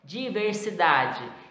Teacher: Então, a penúltima sílaba, se for contar, como eu falei para vocês na aula, da direita para a esquerda, seria a segunda sílaba, né? Então, é a penúltima com o som mais forte.